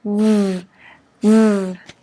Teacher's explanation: Pero la F es solamente el aire saliendo. En cambio, la V es con sonido de las cuerdas vocales.